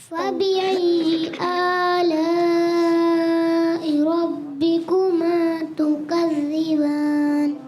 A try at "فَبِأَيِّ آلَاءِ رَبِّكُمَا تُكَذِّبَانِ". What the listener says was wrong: ماشاء اللہ ماشاء اللہ.